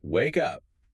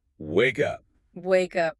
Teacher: A robot says, wake up. A natural speaker links the K sound directly to the U sound. Wake up. Wake up. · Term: linking